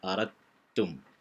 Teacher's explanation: dibaca dengan disambungkan kerana dalam makhraj yang lebih sama atau lebih kurang sama atau berdekat, dal dengan ta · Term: idgham mutaqaribain